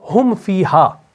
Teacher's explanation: میم اور فا جو ہے، یہ دونوں حروف شفویہ ہیں، شفویہ ہے، ہونٹوں سے ادا ہونے والے حروف ہیں